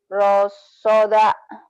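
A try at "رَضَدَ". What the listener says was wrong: Do. Nggak ada titik sod, ada titik do.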